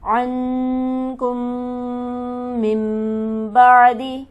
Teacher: کم پر اس لیے غنہ کیا کہ میم مشدد ہے جو کہ ہمیشہ غنہ ہوتا ہے